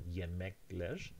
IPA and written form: jemekler (yemekler)